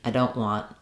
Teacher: But in this case, because it's followed by a consonant sound, I don't want, we're not going to let that T out. We're more likely to use an unreleased T.